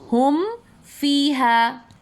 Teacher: میم ساکن کے بعد حرف فا آیا تو میم کی آواز ہم ظاہر کر کے پڑھیں گے